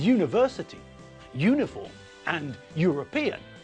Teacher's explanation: we pronounce all these words with a y sound at the front.